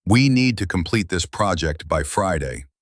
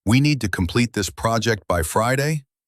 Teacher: with a falling inflection sounding definite, it comes out as we need to complete this project by Friday with a rising inflection sounding like a question or like you're seeking approval. · You know, uptalk, it's when your sentences end with a rising inflection, like you're asking a question, even when you're making a statement